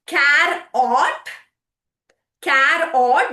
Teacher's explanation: here the O is pretending like a schwa sound, the easy flowing sound